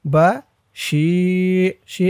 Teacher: শি এক আলিফ টান জিরের পরে ইয়া সাকিন